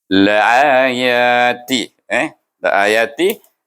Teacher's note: Satu mad badal, satu mad asli. Bacanya serupa, sama panjang, 2 harakah. Iaitu 2 harakah kita baca.